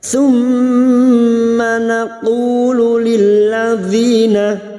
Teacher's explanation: Sum mim yang bertasdid gunnah musyaddada, kita dengungkan selama 3 harokat.